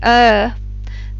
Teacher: as well there's a small opening ah there's a large opening er as in the sound in fur is a very neutral sound